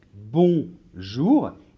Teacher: On entend le O, la lettre O, et on entend la lettre N. Mais dans bonjour, non, on entend la nasale on.